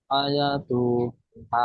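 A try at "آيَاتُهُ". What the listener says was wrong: ঠিক পড়েছেন, কিন্তু টান টোন অসুবিধা হয়েছে, দেখেন। হামজা, হামজার উপরে কি এসছে? খাড়া জাবার, জের নয়, খাড়া জাবার এসছে। খাড়া জাবারকে এক আলিফ পরিমাণ টান দিয়ে পড়তে হবে। ইয়া, দেখেন ইয়াটা দেখেন, আলিফ মাদ্দা, ইয়া আলিফ জাবার ইয়া, তাই না? আলিফ মাদ্দা এসছে, তাই না? তাহলে এটাকে এক আলিফ পরিমাণ টান দিয়ে পড়তে হবে। তার উপরে পেশ এসছে, পেশটি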